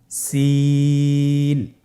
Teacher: সিন হরফটি উচ্চারণ ক্ষেত্রে অবশ্যই তিন আলিফ টেনে পড়তে হবে। সিন হরফটি বারিক হরফ পাতলা করে উচ্চারণ করতে হবে